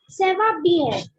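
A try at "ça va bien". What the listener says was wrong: very nice. But it's not seva, it's sava. What do we say? Sava.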